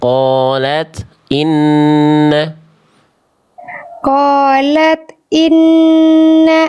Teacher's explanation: Jangan ada e bunyi e. Ta sukun tidak boleh memantul.